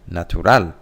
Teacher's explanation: The stressed syllable is on the first one. In Spanish, it's at the end. Natural. That's where the intonation goes up. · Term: syllable stress